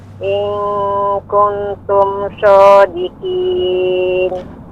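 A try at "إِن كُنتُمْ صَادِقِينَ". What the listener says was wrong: Kuntum jangan terlalu cepat Ibu. Samar ikhfa-nya dipanjangkan. In kuntum shodiqin.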